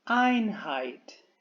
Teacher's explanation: el diptongo en la fonética será ai, A más I